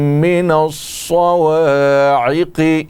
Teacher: صاد حروف مستعلیہ میں سے ہے، موٹا کر کے پڑھیں گے. قاف بھی موٹا ہوگا.